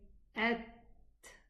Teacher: The ta is special because when it's sukoon, it does not run. The ta, the makhraj of the ta closes totally.